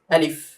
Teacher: আলিফটা হবে তাড়াতাড়ি, আলিফে কোনো টান নেই, আলিফ এভাবে।